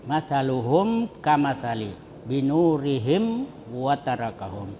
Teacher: Cara membacanya disuarakan dengan terang. Ya, jadi mimnya itu disuarakan dengan terang dan jelas di bibir serta mulut tertutup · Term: Izhar syafawi